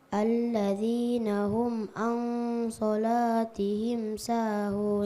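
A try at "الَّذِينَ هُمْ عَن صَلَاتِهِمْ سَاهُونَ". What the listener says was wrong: So-nya kasih tebal nak. Huruf isti'la. So. Al-sholah. Kasih tebal huruf so, huruf isti'la. So, sholah. Terasa itu pangkal lidah? Iya, pangkal lidah. Terangkat.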